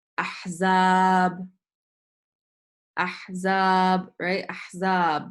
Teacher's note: The longer part or the stressed part of the word is the second part of the word, which is after the zay.